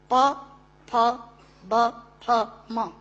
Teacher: दोनों होंठ मिलाकर बोले जा सकते हैं। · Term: ओष्ठांग